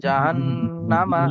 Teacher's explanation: জাহান্নামা টান হবে না, মিমের উপরে জবর আছে, হরকত হরকত বিনা টানে তাড়াতাড়ি পড়তে হয়।